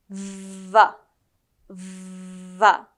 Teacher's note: your upper front teeth and your lower lips will come together, and then you just need to let the air out like a smooth airflow. It's like a buzzing bee. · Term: V sound